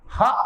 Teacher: అ క హ విసర్గతో కూడినవన్నీ కంఠం నుంచి పుడతాయి.